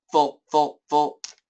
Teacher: They say it in one syllable, so they don't make a diphthong.